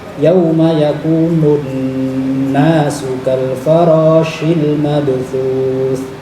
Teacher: Di ayat keempat ada nun tasydid sebisa mungkin, dan kita harus berusaha semaksimal mungkin untuk mendengungkan nun yang bertasydid tersebut dengan durasi 2 gerakan atau 2 harokat